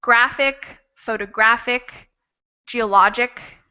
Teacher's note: the syllable that comes right before the ic will be the stressed syllable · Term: stress on penultimate syllable